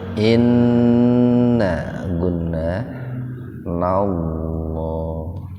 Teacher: Lafaz Allah didahului fathah. Jadi dibaca tebal lafaz Allah.